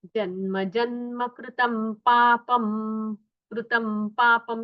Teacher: यहाँ मकार आएगा क्योंकि आगे पकार है